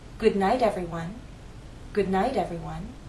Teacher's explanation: flap T as in little will consider the phrase good night if it's followed by an unstressed vowel sound that final T in night changes to a flap T